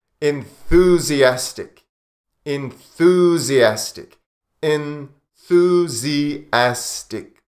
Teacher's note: Enthusiastic. This one can be difficult because of the TH sound, the soft or the voiceless TH.